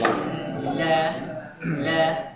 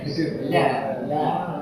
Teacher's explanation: Jadi ujung lidahnya dia menempel di seri atas, suaranya tidak bisa keluar dari situ. Makanya keluar dari sampingnya, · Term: inhiraf